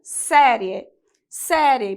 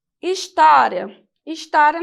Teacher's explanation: caso da palavra série série porque que recebeu acento agudo porque a sílaba tônica é a penúltima e ela termina com um ditongo que é o ditongo e é Ou seja é uma paroxítona